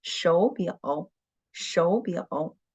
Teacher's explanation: Okay, so another rule we have learned is that when the two third tone were put together, we should turn the first one into the second tone